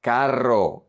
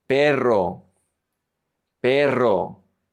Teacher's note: Carro, you roll your tongue. Carro, carro. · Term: double R